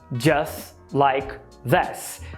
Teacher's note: ele apagou o T do just e apagou o L do like